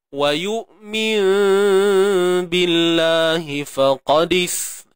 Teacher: Iqlab ni maksudnya tukar. Tukarkan bunyi nun kepada mim. Kemudian kaedah bacaan macam mana? Tutup bibir bersahaja.